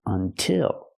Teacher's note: the stress is on the second syllable so we use the is sound